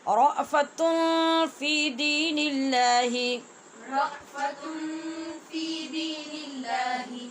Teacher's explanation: ہونٹ بند نہیں کرنے، یہ اخفا ہے، اس میں آواز کو کچھ چھپانا ہے لیکن ہونٹ بند کیے بغیر پڑھنا ہے